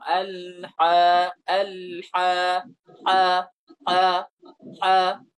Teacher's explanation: Pengucapannya tebal dan itu lebih ke atas dia makhrajnya, tidak di tengah lidah.